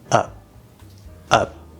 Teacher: And that p by default is going to normally just be a stop p, but it depends on what happens after it. The full pronunciation would be up with a p pushed out, but normally it's stopped.